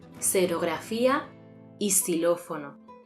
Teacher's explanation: cuando la X va al principio de palabra, esta se pronuncia como el fonema S